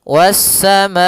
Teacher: Was-samaa, baru dilepaskan a-nya. Kita panjangkan dulu ma-nya baru bacaan ke a. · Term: mad wajib muttasil